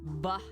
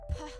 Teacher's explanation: bilabial sounds one is with your voice activated B and one is without it activated P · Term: cognates